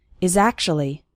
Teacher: the words is and actually kind of blend together